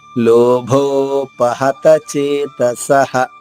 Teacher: మహాప్రాణి ప ఓకారంతో దీర్ఘంగా లోభో పహత చేతసః విసర్గ ఉచ్చారణ హ హస్వంగా చెప్పాలి · లోభో ఇక్కడ మహాప్రాణి భ ఓకారంతో దీర్ఘంగా.